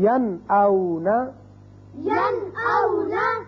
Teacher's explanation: نون ساکن کے بعد حمزہ آ گیا، لہذا نون کو ظاہر کر کے پڑھیں گے